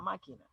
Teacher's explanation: la sílaba tónica es la sílaba antepenúltima